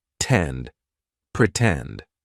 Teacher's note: in the word pretend the stress syllable starts with t tend pretend right so we're going to use the true T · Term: true T sound